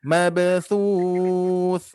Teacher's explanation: pantulkan karena huruf ba sukun dia termasuk huruf yang memantul, huruf qalqalah